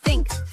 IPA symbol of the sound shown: θ